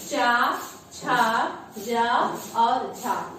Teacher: जैसे चा, छा, जा और झा, ये हमारे स्पर्श संघर्षी व्यंजन है। इनके उच्चारण में हमारी जिह्वा के अगले भाग का तालु के साथ स्पर्श और संघर्ष होता है।